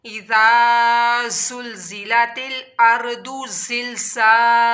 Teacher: ज़ाल को नरमी के साथ अदा करना है और जो ज़ा है इसकी हम लोगों ने साउंड निकालनी है, सीटी की तरह आवाज़ निकालनी है।